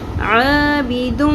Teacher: یہاں پہ ادغام مع الغنہ ہوگا، ٹھیک ہے؟ تنوین کو ہم نے میم کے ساتھ ملا دینا ہے، مدغم کر دینا ہے، ادغام کر دینا ہے، اور غنہ بھی کرنا ہے، کھینچنا بھی ہے